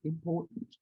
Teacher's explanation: Most Americans will say important. No enunciation of the T at all.